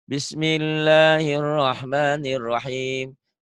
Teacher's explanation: Bismillah, lahnya kenapa panjang? Panjang karena itu mad asli.